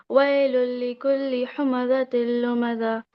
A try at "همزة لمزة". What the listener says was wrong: Okay, we would like to make the ha here clear. همزة اللمزة.